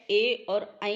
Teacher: ए और ऐ जो वर्ड हैं ये हमेशा कंठतालु में आते हैं